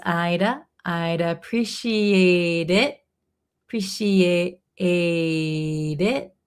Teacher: So, this T in appreciate is going to be a flap T. Sounds like a D.